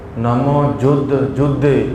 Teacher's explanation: ਜਿਹੜੇ ਧਦੇ ਹੁੰਦੇ ਆ ਇਹ ਭਾਰੇ ਕਰਕੇ ਬੋਲਣੇ ਪੈਂਦੇ ਹਨ